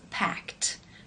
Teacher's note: When you add the ed, it becomes packed, because the k sound is unvoiced. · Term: the t sound